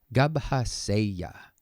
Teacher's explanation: So jātu has caused this doubling of a G.